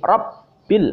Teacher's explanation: Ro, bak tasdid fathah, rob, bak kasroh, bi. Baknya dibaca 2 kali. Dalam artian bak yang pertama mati, bak yang kedua hidup. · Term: baknya tasdid